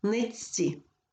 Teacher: вимовляється як один подовжений звук ц